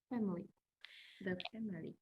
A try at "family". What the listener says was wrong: Mình sẽ không đọc hẳn ra là ba âm là family, family. Hai âm cho em thôi. Nó chỉ đọc là Nó sẽ không đọc là family mà là family, family. Hai âm cho em thôi. Dạ, không đọc là family. không đọc ba âm mà là family.